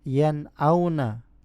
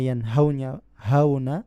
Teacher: Hamzah dan ha memiliki kesamaan dalam makhrajnya, yaitu pangkal tenggorokan.